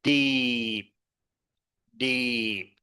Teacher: It's a low tone word meaning raw